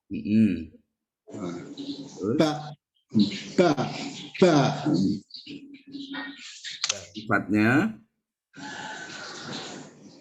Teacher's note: Kalau ba itu keluarnya pertemuan bibir atas dengan bibir bawah.